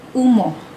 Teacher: Vokal belakang dalam bahasa Bidayuh boleh dibahagikan kepada 3 jenis, iaitu vokal belakang sempit, vokal belakang separuh sempit dan vokal belakang separuh luas. Vokal belakang sempit ini diwakili dengan huruf U dan dibunyikan sebagai U